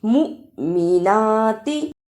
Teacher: مؤمناتی، اسے مومناتی نہیں پڑھنا، میم پیش حمزہ مو، جس حمزہ پر جزم ہو اس پر تھوڑا جھٹکا لگا کر پڑھتے ہیں